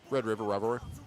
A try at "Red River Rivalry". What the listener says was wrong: Red River. Red River Rivalry. You gotta say the L. before the V. Rivalry.